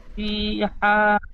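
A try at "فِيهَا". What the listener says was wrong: ফিহা, হা মধ্যে মুনফাসিল, বেশি করে টান দিয়ে পড়তে হবে।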